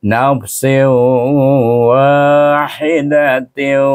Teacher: ada tasydid Baik tanwin bertemu dengan huruf wau diram gunahkan juga dengan dengung dua harakat pada huruf wau · dengan dengung dua harakat pada huruf waw. Walaupun dihazafkan zat nun tu hilang, tetapi dia masih dengung pada waw. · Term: idgham ma'al gunnah